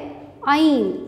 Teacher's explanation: आइन वस्ते हलक यानी कि हलक का दरमियानी हिस्सा यहाँ से अदा करते हैं